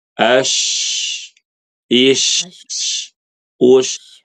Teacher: Ya, tafashi. Jadi menyebar, udaranya tuh menyebar di mulut.